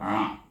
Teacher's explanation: Kita bunyi a daripada pangkal halkum kepada tengah halkum